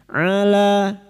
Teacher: Huruf ain wastul halqi atau tengah tenggorokan